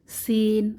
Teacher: জিহবার আগা সামনের নিচের দুই দাঁতের পেট ও আগার সঙ্গে লাগিয়ে